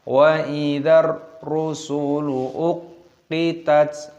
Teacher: Rusulu di sini semuanya pendek, jangan kita panjangkan